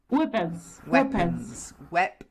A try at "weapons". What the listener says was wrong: You get the p, not b, p. Weapons.